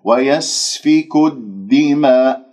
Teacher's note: دال مشددة شديدة مجهورة